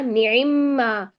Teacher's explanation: پہلے حرف کو دوسرے حرف میں ایسے داخل کیا کہ دونوں ایک ساتھ مشدد ادا ہوئے, تو یہ ادغام کی کیفیت بن گئی نا. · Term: ادغام کبیر